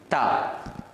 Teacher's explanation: மேல் பல்லுக்கு மேலே இருக்கக்கூடிய அந்த முரசிலே எங்களுடைய நாக்கை வைத்து அழுத்தி தா என்று உச்சரிக்க வேண்டும்.